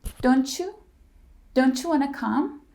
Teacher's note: when T followed by y it creates the CH sound